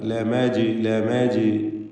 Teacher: ഇലൈക്കും എന്നതിൽ സാക്കിന മീമിനെ ഇൽഹാർ ഷഫവി നൽകി മണിക്കാതെ വെളിവാക്കുക. ലമജ്നൂൻ ജീമിൻ്റെ സുക്കൂൻ ഖൽഖല സുഗ്റ നൽകി ഹറക്കത്ത് പോലെ ശബ്ദം ചലിപ്പിക്കുക.